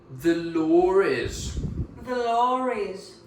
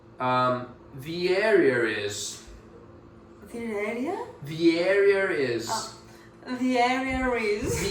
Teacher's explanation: Now, let's talk about this intrusive R, which is a very interesting phenomenon in English. There is no R written down, but you pronounce it.